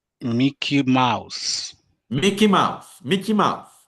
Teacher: mouse should be stressed because we said that in a compound, the second noun in the compound should be always stressed.